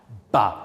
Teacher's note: Ba is a voiced bilabial stop.